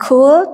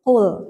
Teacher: Jadi bukan kul tapi qul, lebih bawah lagi gitu ya